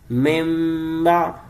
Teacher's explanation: اقلاب نون ساکن یا تنوین پلس حرف با ایکولز ٹو میم سے بدل کر گننا ہوگا. نون ساکن یا تنوین کو میم سے بدل کر گننا کریں گے · نون ساکن کے بعد دیکھا کہ حرف با ہے، لہذا یہاں پہ اقلاب کا قاعدہ لگایا، یعنی میم سے بدل دیا